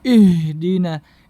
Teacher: kesalahan selanjutnya adalah mengeluarkan huruf H dari dada.